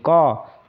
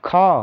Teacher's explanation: क से ज्यादा आपका आवाज ऊंचा हो रहा है कहां पे ख में